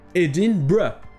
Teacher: La prononciation officielle c'est Edinburgh. Et ça donne l'impression au son que le R est avant le U